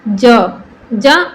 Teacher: ज अल्प प्राण वर्ण है